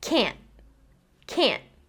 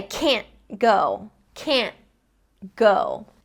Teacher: I finished the word with the tip of my tongue still on the roof of my mouth? So I haven't done that full explosion.